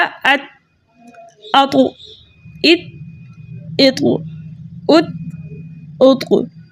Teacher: इसकी आवाज़ इसके मखरज में रुकी नहीं बल्कि पलट कर आई, जबकि ता जो है उसकी आवाज़ उसके मखरज में रुक गई